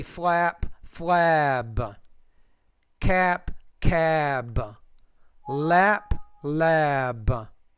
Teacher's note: the vowel sound before the P should be shorter because it comes before voiceless consonant. The vowel before B should be longer